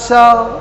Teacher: स का उच्चारण, बड़का स का उच्चारण आप तालु से कर रहे हो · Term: तालव्य स